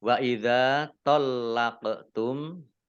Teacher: Wa idza tallaqtum dzal fathah alif mat tabi'i panjang 2 harokat, lamnya dibaca double ada tasdidnya, kemudian qaf sukun bacaan qalqalah dibaca memantul ditampakkan pantulannya